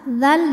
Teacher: maka cara bacanya adalah dalal dibaca panjang dua harakat saja